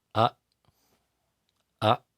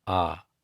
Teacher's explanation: it's approximately twice as long as the short A